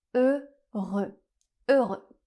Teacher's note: Ensuite on a les lettres EU qui ensemble font le son /ø/. C'est un /ø/ fermé, et le X final est encore une fois une consonne muette la dernière consonne du mot ne se prononce pas donc on a le mot heureux.